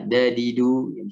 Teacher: ujung lidah mengarah ke Pangkal gigi seri atas atau boleh juga ya di ujung langit-langit